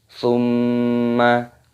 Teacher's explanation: mim tasdid, hukumnya dibaca gunnah. Cara membacanya yaitu berdengung.